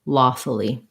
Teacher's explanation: it's not really like the word fully um because it's not stressed on the u sound so lawful will have a schwa there and an e sound · So it sounds like lawfully, but long and then short. So reduce vowels in the second two syllables